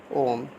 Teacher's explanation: जिसके उच्चारण में दीर्घ स्वर से अधिक समय लगता है, लगभग 3 मात्राओं के बराबर समय लगता है। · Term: प्लुत स्वर